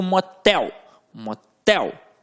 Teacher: tel ficou com a sílaba mais forte, que é a última, portanto uma oxítona